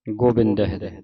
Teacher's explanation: ਹੋੜੇ ਦੀ ਆਵਾਜ਼ ਕਰਨੀ ਹੈ ਔਂਕੜ ਦੀ ਆਵਾਜ਼ ਉਚਾਰਨ ਨਹੀਂ ਕਰਨੀ